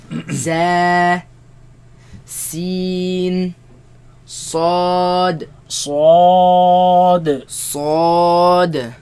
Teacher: They come from the tongue placed behind the bottom teeth.